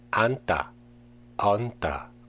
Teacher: 니은지읒 is pronounced 니은 in 앉다, 얹다. The 지읒 disappears and become a double consonant in the next syllable.